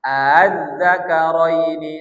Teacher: Melemahkan suara hamzah yang kedua. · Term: tashil